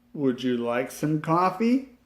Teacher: the would at the beginning of the question begins on a low note and then rises to a high note at the very end · question has a rising arc from beginning to end